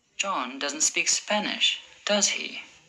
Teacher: my voice went down at the end with does he because i'm sure he doesn't speak spanish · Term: falling intonation